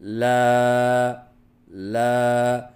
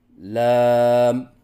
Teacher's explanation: تو ان 2 غلطیوں کو درست کرنے کا آسان طریقہ یہ ہے، جیسے کہ ہم اردو میں کہتے ہیں پانی لا، تو لفظ لا کا بار بار اس طرح مشق کروائیں، جیسے لا لا، اور آخر میں ہونٹ بند کر لیں، جس کی وجہ سے میم کی آواز پیدا ہو جائے گی